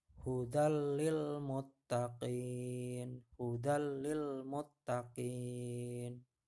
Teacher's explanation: Jadi tidak ada dengungannya di sini, hanya meleburkan saja ya · Tanwinnya di huruf dal masuk ke dalam huruf lam, tidak perlu didengungkan, hanya dileburkan saja ya. Hudal lil muttaqin ya, tanwin bertemu huruf lam. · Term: idgham bilahuna